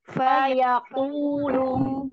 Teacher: Ini dhammahnya kurang monyong ini.